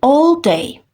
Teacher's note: a hərf birləşməsini uzun o kimi tələffüz edirik